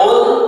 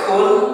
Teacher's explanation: huruf qaf, ya, pangkal lidah menyentuh pada langit-langit yang lunak, sedangkan kaf menyentuhnya pada langit-langit yang keras